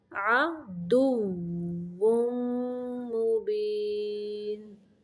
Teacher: یہاں پہ واو کی ادائیگی کے وقت دانتوں کا استعمال نہیں کرنا بلکہ ہونٹوں کو گول کرنا ہے۔